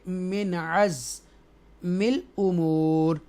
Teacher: نون ساکنہ کے بعد حروف حلقیہ میں سے، تھروٹل لیٹرز میں سے عین ہے، اس لیے نون کی جو ساؤنڈ ہے نون کا وہ کلیئر پڑھیں گے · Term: اظہار